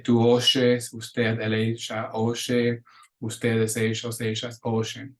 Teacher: in Uruguay and Argentina, for example, where they pronounce the sh for the Y and the double L